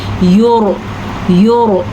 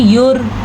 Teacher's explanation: یرسل، پھر سے را پر پڑھیں گے کیونکہ را ساکن ہے اور را سے پیچھے والے حرف کے اوپر پیش ہے تو را پر یعنی کہ موٹی کر کے پڑھی جائے گی